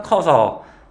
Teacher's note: 말 그대로 크 어서가 으가 탈락하니까 커서. 담그아 같은 거 잠그아. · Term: 으 탈락